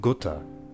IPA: gʊtə